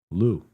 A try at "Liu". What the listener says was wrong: There's an I in there. It's not before an E, it's before a U.